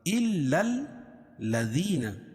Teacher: یا ساکن سے پہلے زیر ہو تو یا مدہ، اس کو ایک الف کے برابر کھینچ کے پڑھیں گے. آمنو کھڑا زبر قائم مقام الف مدہ کے، اس کو بھی ایک الف کے برابر کھینچ کے پڑھیں گے.